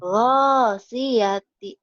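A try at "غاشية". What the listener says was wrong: Shinnya mana? Ghasyiyati.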